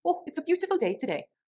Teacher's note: with a Welsh accent this could be oh it's a beautiful day today and there would be sing songy intonation throughout